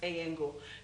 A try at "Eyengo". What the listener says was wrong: Eyengo. The G is silent. Forget about the G.